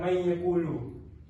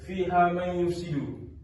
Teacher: Nun mati bertemu huruf ya. Kat situ kita perlu dengungkan dia yang contoh lain fiha yufsidu nun mati bertemu dengan ya juga. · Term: idgham mual guna